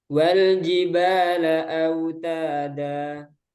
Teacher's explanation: Ada 3 yang dibaca 2 harokat. Ba, ta, da. Nah, ini 2 harokatnya harus sama, harus seimbang, stabil.